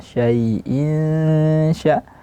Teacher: Syai'in di sini ada madlin, ya sukun, sebelumnya ada fathah, dialirkan bunyi ya-nya